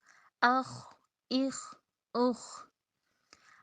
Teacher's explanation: ज़बान का जो पीछे से मोटे वाला हिस्सा है उसको तालु की तरफ बुलंद करना है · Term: ख्वा